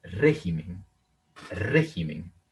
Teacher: Vean que el acento está en la antepenúltima sílaba